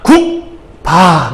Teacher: 왜냐면 소리를 막았다가 국, 밥 하고 터트리기 때문에 국이라고 하는 게 밑에 받침에 기역이 오게 되면 소리를 막아. 그래서 뒤를 팡 터트리게 되어 있거든요. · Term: 파열음